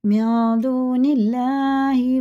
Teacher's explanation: زیر کے ساتھ اگر اللہ کا لام ہوتا ہے باریک پڑھتے ہیں، جیسے لکھا ویسے ہی پڑھیں گے، موٹا نہیں کریں گے۔